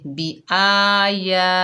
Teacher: کے اوپر کھڑا زبر ہے، یا کے اوپر کھڑا زبر ہے، دونوں کو ایک ایک الف کی مقدار کھینچ کر پڑھیں گے